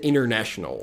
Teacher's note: A gente pode omitir o T, na pronúncia americana é muito comum